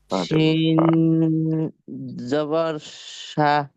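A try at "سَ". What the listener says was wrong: হ্যাঁ, এই যে দেখেন এটা শিন, এই যে পরেরটা শিন, এটা মোটা শিন, আর আগেরটা আগেরটা সিন, চিকন, বাতাসটা চিকন হবে, সিন। হ্যাঁ, সিন, সিন, সিটি আওয়াজ হবে।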